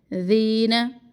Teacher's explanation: والذین، ذی کو زی نہ پڑے. ذین، زبان کی نوک کو نرمی سے اوپر والے 2 دانتوں کے کناروں سے لگائے